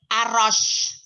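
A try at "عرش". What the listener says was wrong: Arrosh. Tafasinya mana tafasi? Arrosh.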